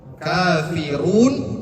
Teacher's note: Berharkat domah. Maka dibacanya tebal.